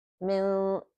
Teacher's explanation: So we hold it as min. See, the sound just comes from the nose, and it's light because right after that we have the letter sin, which is not one of the heavy letters. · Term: light ikhfa